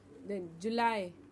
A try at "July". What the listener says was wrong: It's not July, it's July. It's not an E sound at the end, it's I, July.